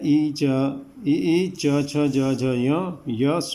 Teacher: आपकी जीभ च बोलते हुए जहाँ जा रही है वो तालु होता है। ठीक है, और उसको कहा जाता है तालव्य।